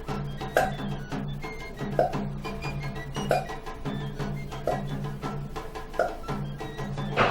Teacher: continuamos con la P glotalizada y su modo de articulación. Esta grafía, su sonido fonológico es bilabial. Por lo tanto, se articula de la siguiente manera.